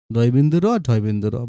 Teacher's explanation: এগুলো উচ্চারণের সময় দন্তমূলের উপরে একটু মানে মূর্ধায় টোকা দেওয়ার মতো একবার ছুঁয়ে যায়। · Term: তাড়িত ব্যঞ্জন